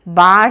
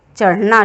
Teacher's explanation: इन्हीं को उत्क्षिप्त व्यंजन भी कहा गया है, क्योंकि हम जब इनको बोलते हैं तो अपने जीभ को अर्थात जिह्वा को आगे की ओर मोड़ के ऊपर की ओर फेंकते हैं